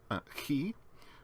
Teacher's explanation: The voiceless fricative velar consonant is chi, which is again a rough sound.